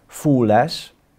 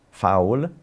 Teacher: So the word smale corresponds to small, fooles, that's fowl, so again the long U got diphthongized, and today's pronunciation of the word is fowl